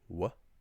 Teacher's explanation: broad BH in Ulster and Connacht is pronounced as w, pretty much an English W